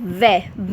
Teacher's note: जब बोलते वक्त वै हम बोल रहे हैं तो हमारे दांत और होठ मिल रहे हैं, इसीलिए इसका उच्चारण स्थान दंतोष्ठ्य, दांत और होठों के मेल से लिखा गया है।